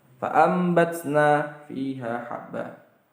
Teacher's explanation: jadi mengganti nun menjadi mim. Fa'ambatsna kan artinya fa'anbatna, tapi baca fa'ambatsna karena artinya iqlab adalah mengganti.